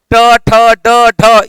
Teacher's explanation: टवर्ग का होता है। ट, ठ, ड, ढ ये सभी के सभी जो हैं इनके उच्चारण स्थान होते हैं मूर्धा